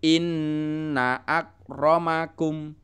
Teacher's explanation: Inna akromakum in-nya ditekan dan panjang